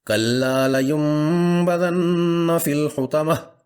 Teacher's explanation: نون ساکن کی فوراً بعد با اسی کلمے میں ہے، نون ساکن کی بجائے یہ میم پڑھی جائے گی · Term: اقلاب